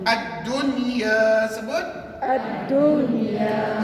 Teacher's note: Kata ulama, kamu bacakan, terangkan bunyi nun mati itu dan kamu jelaskan dan dibaca tanpa dengung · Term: izhar mutlak